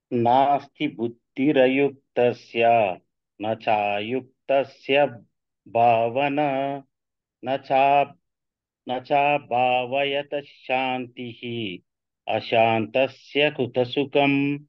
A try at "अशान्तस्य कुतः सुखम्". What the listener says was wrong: కుతः సుఖం కుతః కొంచెం స్ట్రెస్ చేయాలి